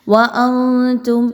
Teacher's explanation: نون ساکن کے بعد تا آ گئی، اگین حروف اخفا میں سے ہے، نون کی آواز کو کلیئر نہیں پڑھنا بلکہ مخفی کر کے پڑھنا ہے، چھپا کے پڑھنا ہے.